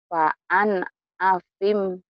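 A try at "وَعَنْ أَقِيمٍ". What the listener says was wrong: Akim. Bukan apim. Kan titiknya dulu. Idhar.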